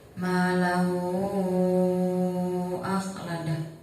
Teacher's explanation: Di situ ada mad silah yang bertemu dengan hamzah, maka cara bacanya panjang. Panjangnya 3 alif dan 6 harokat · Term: mad silah tawilah